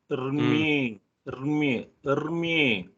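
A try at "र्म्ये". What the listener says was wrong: Oh, use a akara in the beginning. Use a akara. Armye. Armye. So Rmye. So Repa, hook first, then Makara, then Yakara, then the Ekara. So Rmye.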